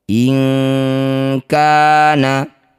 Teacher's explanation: Cara bacanya bunyi nun sukun kita ganti jadi ng bunyinya. Jangan lupa dengungkan dua harakat. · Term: ikhfa ab'ad